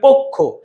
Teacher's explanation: প এর ভিতরে একটা অ আছে, অটা ও হয়ে গেছে, তাহলে বলো পো